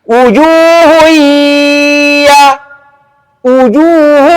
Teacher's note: Kalau hidungnya ditutup, bunyi tetap elok, maka itu menunjukkan idgham bila gunah walaupun bunyinya panjang.